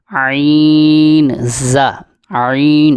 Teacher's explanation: عین حلق کے درمیان والے حصے سے ادا ہوگا